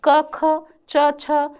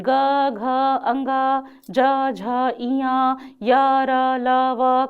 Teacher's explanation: स्वर तंत्रिकाओं में घर्षण हो और उनके बीच से आती हुई ध्वनि में कंपन के साथ ध्वनि उच्चारित हो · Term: सघोष ध्वनि